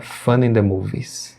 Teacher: Fun vai emendar com o in, vai ficar fun in the movies.